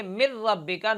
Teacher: نون کو را سے بدلیں گے اور را کا را میں ادغام کر دیں گے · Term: ادغام بلا غنہ